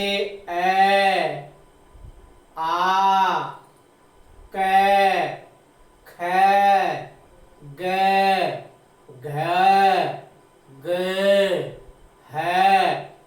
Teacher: इन सब का उच्चारण स्थान कंठ होता है, अर्थात ये अपने मुख से बोलते हैं तो इनकी ध्वनि है वो कंठ से निकलती है।